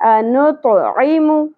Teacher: میم کی پیش کو آدھی الف کے برابر کھینچنا ہے